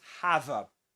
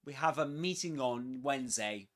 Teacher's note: The linking of the final consonants, the V sound, with the next vowel sound. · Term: catenation